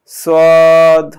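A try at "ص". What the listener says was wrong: হ্যাঁ, সদটা আরেকটু মোটা করে বলতে হবে, সদ।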